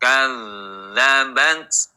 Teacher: kadzabat tidak dibaca kadabat jangan mati t tapi apa terdengar suara yang mengalir